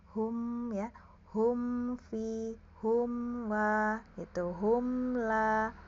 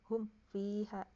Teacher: Idhar itu jelas ya. Mimnya jelas, tapi ada aliran sedikit ya, jangan dihentak. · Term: idhar syafawi